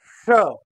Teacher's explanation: इसलिए ध्वनि नाम तालव्य हुआ श इसका उच्चारण करते समय हमें अपनी जीभ को तालू से ऊपर तालू से सबसे ऊपर अर्थात मुर्धा के पास ले जाना पड़ता है मतलब अपनी जीव को पूरी तरह से उठा देना पड़ता है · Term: मुर्धन्य